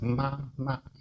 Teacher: first it's ma, because it's the lips, and the first vowel is ah. It's the easiest one.